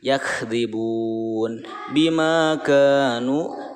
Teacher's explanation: Kemudian selanjutnya terakhir ini yakhdibun bima kanu, bima ma panjang, ka panjang, nu panjang karena itu matobi semua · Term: mad tobi